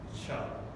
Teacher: So it has a little bit of friction there for a second before you release. Chuh. So a fricative. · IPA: tʃ